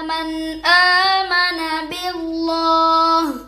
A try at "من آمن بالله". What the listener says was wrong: دو غلطی، اچھا بچوں اب باللہ پہ ہم نے وقف کیا ہے، کیا کیا ہے؟ وقف کیا ہے، تو ہم نے ہا پڑھی ہے لیکن ہا کی زیر اب ادھر کوئی نشانی آگے نہیں ہے نا، کوئی بھی نہیں، ہم رک گئے نا، رک سکتے نشانی ہو یا لیکن رکنے کے بعد دیکھنا ہے کہ نشانی کوئی بھی نہیں تو پیچھے پڑھنا ضروری ہے، کوئی کسی قسم کی نشانی نہ ہو پیچھے پڑھنا